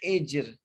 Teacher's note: ہا کے نیچے زیر ہے، اس لیے یہ را باریک ہو گیا، حجر، اور جیم پہ قلقلہ بھی ہوگا۔